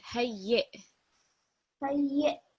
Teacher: because it's got a sukoon on top of the hamza, you're going to hear a slight jerk at the end.